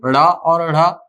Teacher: क्यों बोला जाता है इनको उक्षिप्त व्यंजन, क्योंकि इनका उच्चारण करते समय जीभ नीचे की ओर पटकती है।